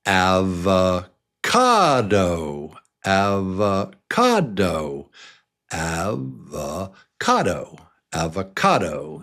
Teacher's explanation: It's 4 beats, and number 3 is the strong one